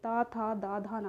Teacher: हैं यह दंत से उच्चरित होते त था दा धा ना जब आप बोलेंगे तो आपकी जो जीवा है वोह आपके दांत को टच करती हुई इसको हम दंत वर्ण कहते हैं पा वर्ग हो जाता